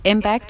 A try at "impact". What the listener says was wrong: Yeah, notice the word impact. You want to pronounce that with more air with the P. So impact, it can really impact my score.